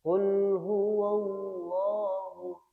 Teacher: Ketika membaca lafzul jalalah tafkhim atau tebal diusahakan membacanya dengan agak diberatkan. Jadi, qul huwallah huwallahu huwallahu agak berat.